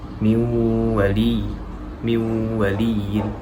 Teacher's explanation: Jadi pengucapan nun yang terdapat dalam idgham bi gunnah ini dia tadi ya, masuk ke istilahnya tadi, masuk kepada huruf berikutnya, dan huruf berikutnya itu menjadi bertasydid. Jadi seakan-akan huruf nunnya itu sudah tidak terdengar ya, karena masuk ke dalam huruf berikutnya